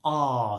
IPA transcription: ɑː